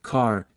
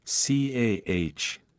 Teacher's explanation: The R sound is often silent when it appears at the end of a word, non-rhotic.